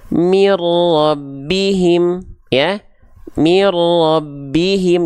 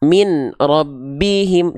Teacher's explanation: dileburkan, n-nya hilang ke r jadinya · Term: idgham bila gunnah